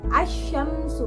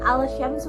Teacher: cara membacanya itu dimasukkan, alif lamnya tidak terlihat ya, tidak terbaca gitu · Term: alif lam syamsiah